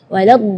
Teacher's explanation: Huruf dhad itu memang termasuk huruf bagi orang Arab pun sulit untuk dilafal, apalagi orang Indonesia, tapi itu bukan alasan untuk kita tidak belajar memperbaiki makhraj kita. Waladh ya, huruf dhad itu keluarnya dari pinggir lidah maupun yang kanan ataupun yang kiri atau dua-duanya.